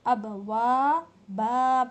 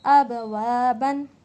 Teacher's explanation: دو زبر پر وقف کرنا ہو تو ایک صبر کے ساتھ الف دے کر پڑھا جائے گا